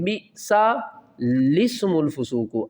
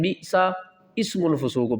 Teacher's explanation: اس لام کو سین سے ملائیں گے